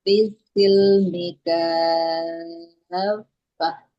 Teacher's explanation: harus lebih mengalir lagi huruf fa-nya. Karena sifatnya rokhawah, mengalirkan suara, dan hams, mengalirkan nafas.